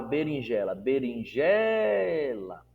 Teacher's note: eu dei ênfase na penúltima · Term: sílaba tônica